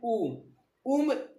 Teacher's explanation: देखिए ओस्ट की आकृति गोलाकार हो रही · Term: गोलीय